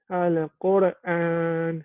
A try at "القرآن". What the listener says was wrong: Don't say al-Qura. Al-Qura, no. Al-Qur'an. Don't say ala. Al-Qur'an.